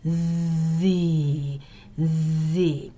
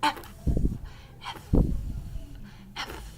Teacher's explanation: you should be able to feel the vibration of your chords when you say Z, Z, and V. But you won't feel any vibrations when you say S and F.